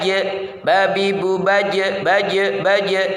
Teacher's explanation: dalam keadaan sukun hendaknya suara yang terhenti itu dipantulkan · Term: kalqolah